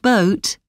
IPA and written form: bəʊt (boat)